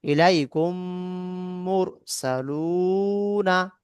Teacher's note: মিম সেকেন্ডের পরে মিম এসছে, প্রথম মিম দ্বিতীয় মিমের সঙ্গে মিলিয়ে গুণনার সঙ্গে পড়তে হবে। একে ঈদগামে সাফাবি বলে।